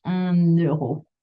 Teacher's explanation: So keep work. Is un, but it's just when we have to do the liaison that this N appears, that N sound